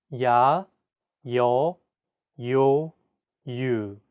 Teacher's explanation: There are also iotized vowel sounds in Korean. This simply means that there's an added Y sound. 야, 여, 요, 유.